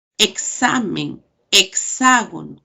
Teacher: sumo un fonema, por ejemplo, velar, que es K, y la alveolar de la S